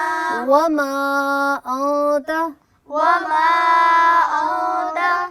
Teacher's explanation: मीम की अदायगी में गुन्ना पैदा नहीं करना है, आपने बहुत वाज़े तौर पर मीम को अदा करना है